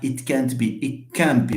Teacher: Where is the t? It has been swallowed. It has gone. Why? Because of t and k.